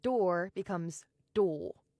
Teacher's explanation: RP is typically non-rhotic, so door becomes doll. You drop the R and you elongate the O.